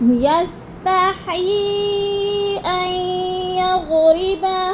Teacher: یستحیی این پہ جو ہے ادغام، وہ مد منفصل ہے، 4 الفی مد ہے، 4 الف کے برابر ہم نے اس کو کھینچ کر پڑھنا ہے